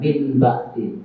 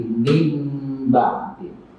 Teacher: nun sukun diganti dengan mim dan ditahan mim ba'di. Jadi bukan min ba'di, tapi mim ba'di. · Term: iqlab